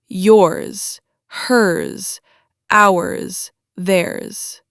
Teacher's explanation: The long possessive forms, yours, hers, ours, theirs, all end with a Z sound, not an S sound, a Z. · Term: voiced Z